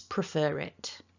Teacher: this little tiny linking r prefer it writ it kind of pops up and attaches itself between the two words